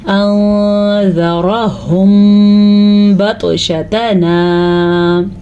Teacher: मीम साकिन के बाद बा आ जाए तो होंठ बंद कर देते हैं और इख्फा शफ़वी का कायदा अदा करते हैं।